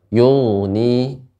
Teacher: ketika ghain ini sifatnya mengalir namun dia tebal